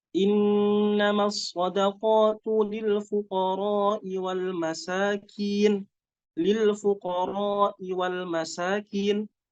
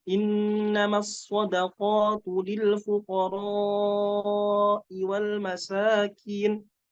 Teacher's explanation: dengan memanjangkan huruf ro pada kalimat lil fuqara'i wal masakin.